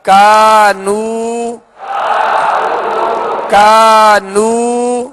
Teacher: الف مدہ بھی ہے اور واو مدہ بھی ہے، دونوں کو ایک ہی مقدار میں یعنی ایک الف کی مقدار کھینچ کر ادا کریں گے